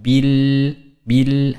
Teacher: ba ditekan kemudian tasydid bil dan tipis